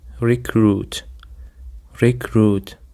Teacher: Recruit consists of two syllables and the stress is on the second syllable.